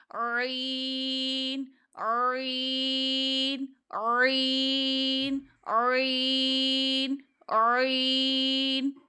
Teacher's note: आवाज निकालनी है आइन की हलक के दरमियान से ऐन ऐन ऐन ऐन ऐन मद है तो तीन अलिफ जितना खींचेंगे। · تو یہ آواز نکالنی ہے آئین کی، حلق کے درمیان سے، عین عین عین عین عین، مد ہے تو 3 الف جتنا کھینچیں گے